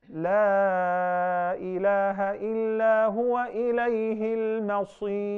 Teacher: the ra will be thinned. Despite the fact that the ra has pesh or dhamma. Because now it will be inactive.